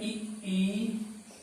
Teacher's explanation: संवरित स्वर जिसको उच्चारण करने में मुख लगभग बंद रहता है उसे हम संवरित स्वर कहते हैं।